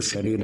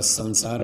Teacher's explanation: तो श और स का अंतर समझना चाहिए। एक श तालव्य श है जो शरीर में बोला जाता है और संसार में स दंत्य है